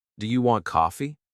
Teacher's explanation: when I ask a question, my voice often goes up at the end. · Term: intonation